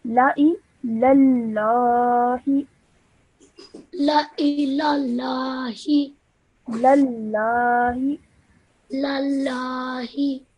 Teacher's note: Because this lam has a shadda, you join the previous letter onto it with force